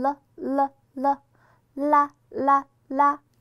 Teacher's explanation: 舌头在这个地方呢，它是会向前这样做一个弹一下这个动作，把你的上齿龈勾一下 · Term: 边音